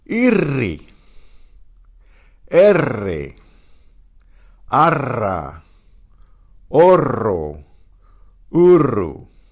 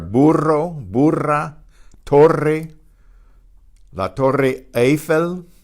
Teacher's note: The double R is a trilled R.